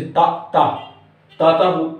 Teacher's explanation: जीभ हमारी दांत से टकराती है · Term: दंत वाले